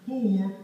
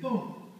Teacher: We don't even pronounce the R because it ain't in our phonetic system in that position.